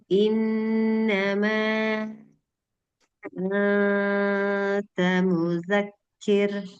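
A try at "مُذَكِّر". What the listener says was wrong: lembutkan sedikit lagi ee ro supaya enggak seperti R Indonesia seperti kita ucapkan ramai-ramai, ribut-ribut, terlalu keras.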